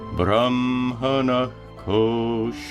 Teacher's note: When a visarga is followed by a ka or ka, it's pronounced as a guttural sound.